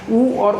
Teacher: ऊ और ऊ बोलते टाइम पिछले भाग से बोलते हैं जीभ के, तो ये पश्च स्वर भी हुआ